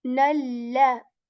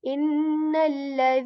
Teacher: So here, you see nalla. The sound of the lam letter is a very light one.